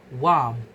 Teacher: When moving from the bilabial nasal lips closed to the interdental fricative tongue between teeth, the lip must open in the airflow stop before the lips fully separate and the tongue is in place. A voiceless bilabial stop p is produced, resulting in warmth. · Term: consonant appendices